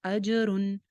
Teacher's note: جیم کے اوپر کلکلا ہو جائے گا